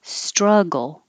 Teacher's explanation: the vowel is uh as in up